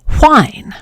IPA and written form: ʍaɪn (whine)